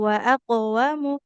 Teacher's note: Nah, mimnya nggak boleh kita panjangkan ya. Wa aqwamu karena ingat hurufnya mimnya dhamma, di depannya tidak ada wawu, maka nggak boleh kita baca panjang huruf mimnya.